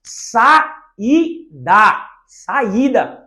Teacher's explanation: No iato, as vogais ficam em sílabas diferentes.